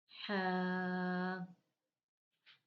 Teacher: ہا یہ حلق کے درمیان والے حصے سے ادا ہوتا ہے۔